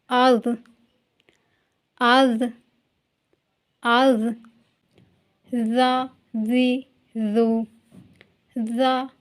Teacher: जबान की नोक को थोड़ा सा बाहर निकालिए और ऊपर के जो दो दांत है उनकी नोक से लगाते हुए पढ़िए